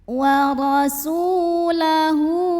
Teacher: Su mad tabi'i karena ada waw sukun yang didahului baris dhammah. Cara membacanya dipanjangkan sinnya 2 harokat saja.